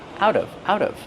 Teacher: Out of pronunciation out of the T changes to a fast D